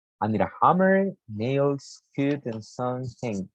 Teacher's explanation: your pitch should rise at the end of the word for each item but drop after the last one